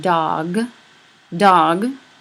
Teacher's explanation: At the end of dog, you have a voiced consonant. You have that voice stopped g, but sometimes it's partially devoiced.